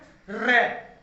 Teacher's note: आप देखोगे तो रे में जीभ है वो तालु के निकट पहुंच जाएगी, रे बोलेंगे ना तो पहले जीभ है वो तालु के निकट पहुंच जाएगी, गोल हो जाएगी और फिर कंपन करती हुई नीचे गिरती है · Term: लुंठित